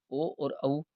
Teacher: ओ और औ इनका उच्चारण स्थान कंठ और ओष्ठ होता है, इसलिए इनको कंठोष्ठीय वर्ण कहते हैं। तो इनका उच्चारण स्थान द्विस्थानीय उच्चारण स्थान माना जाता है, क्योंकि इनका उच्चारण दो दो स्थानों से मिलकर के होता है, तो इसलिए इनको द्विस्थानीय वर्ण कहते हैं।